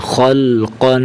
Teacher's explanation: लस्त अमरिन बरदन जमन हबून खुसिन ख लाम ज़बर खफ दो ज़बर कन ख को मोटा करेंगे और ख की हरकत को लाम के साथ मिलाएंगे